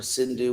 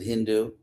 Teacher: on the west side of the river they pronounce an initial S as an H